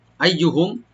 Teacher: আইয়ুহুম এখানে ইয়াটাকে ডাবল করে পড়বেন, আর মিম সাকিন এখানে জাহার করবো আমরা।